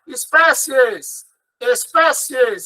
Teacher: Espécies, espécies. Então, eu tenho um I como semivogal e um E como vogal. Ele é crescente.